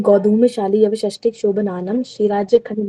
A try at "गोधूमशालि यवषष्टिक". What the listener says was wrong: धीरे धीरे धीरे धीरे, गाड़ी नहीं भगानी है, धीरे धीरे।